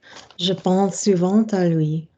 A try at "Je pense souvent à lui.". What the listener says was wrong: Are you saying souvent à lui in a kind of join? Are you saying de or souvent à lui in a joined way? Yeah, don't do that. Je pense souvent à lui. Je pense souvent à lui.